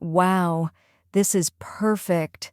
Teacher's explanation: Hear the excitement and softness in my voice.